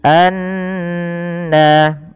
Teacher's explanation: kita memasukkan bunyi suaranya ke rongga hidung kita biasanya kalau kita pencet hidung kita tidak akan bisa terbunyikan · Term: ghunah